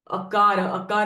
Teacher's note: from the throat the tongue doesn't touch anywhere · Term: akara